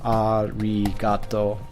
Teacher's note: the R sound in Japanese is not the same as the R sound in English. It's somewhat in between an R and maybe a D or an L. I guess it's maybe between an R and an L more so than D.